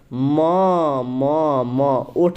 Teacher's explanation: सबसे पहले आप म को बोलिए तो म ओठ सट रहा है आपका, म ओठ सट रहा है तो ओष्ठ होगा